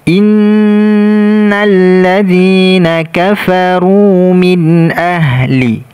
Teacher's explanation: nun bertasydid. Kita dengungkan, dengungnya keluar dari hidung, kemudian kita tekan karena ada tasydid.